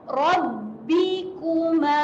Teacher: Rabbikuma, Rabbi, huruf ba, hati-hati pada huruf ba, ada tanda sabdu, kita tahan, rapatkan bibir.